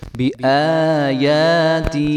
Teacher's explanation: یا ساکن سے پہلے زیر آ رہی ہے تو یہ یا مدہ بن رہی ہے، اس کو بھی ایک الف کے برابر لمبا کریں گے